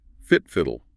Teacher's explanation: Notice the short I sound. It's not feet, it's fit.